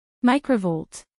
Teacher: acentuación en la primera sílaba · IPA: ˈmaɪkrəˌvoʊlt